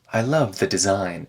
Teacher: so here the word the gets reduced and connected to design